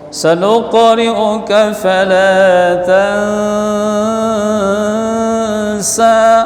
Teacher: Nun mati jumpa dengan sin, hukumnya ikhfa dengung